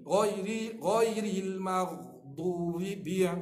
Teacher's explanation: Ghairil maghdubi bi ba huruf syiddah, kemah. Ba jahar terang. Jangan ambil v, jangan v.